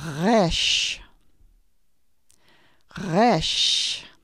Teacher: You say it back in the beginning of your throat. Your tongue drops back.